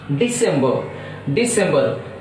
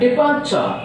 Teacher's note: Now indebted, so in is a preposition and E is a first syllable, second syllable de, in de, so that stress is on second syllable